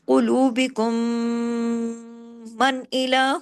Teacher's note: کاف ہیوی اور غنہ بڑا، اکمل غنہ، میم مشدد پہ ہمیشہ بڑا غنہ ہوتا ہے، آواز دیر تک ناک میں چھپتی ہے